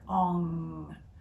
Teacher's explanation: pronounced by lifting up the tongue against the back of the roof of the mouth so it vibrates your entire sinus cavity